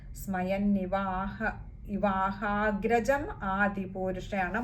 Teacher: മായുടെ അകാരം ശ്രദ്ധിക്കുക, നീട്ടിയെടുക്കണം.